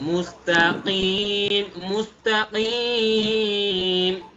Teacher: কফটা গলার ভেতর থেকে